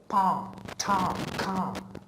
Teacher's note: If you put your finger on Adam's apple, you will see that in pa, ta, ka, the sound obviously is produced but with no vibration